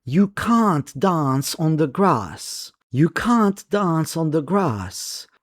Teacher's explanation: So, in British English, it sounds like you're adding the letter H after the A to make it longer. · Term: long A